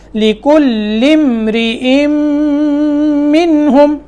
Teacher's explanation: لِكُلِّ امْرِئٍ مِّنْهُمْ، اب لِكُلِّ یہ لام کو ہم نے میم سے ملایا، بیچ میں حمزہ جو الف ہے یہ گر گیا، کیونکہ یہ حمزہ وصلی کہلاتا ہے، اور جب لفظ کو ملاتے ہیں تو یہ بیچ میں گر جاتا ہے.